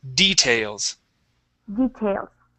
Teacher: stress at the beginning of the word